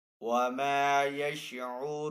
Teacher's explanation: را کے اوپر یہاں پہ پیش ہے تو را کو یہاں پہ پر پڑھیں گے، واو ساکن سے پہلے والے حرف کے اوپر اگر پیش ہو تو وہاں پہ واو مدہ ہوتا ہے، تو واو مدہ ہونے کی وجہ سے را کو تھوڑا سا کھینچ کر ادا کریں گے، وقف تام کی علامت ہے، تو نون کو یہاں پہ ساکن کریں گے۔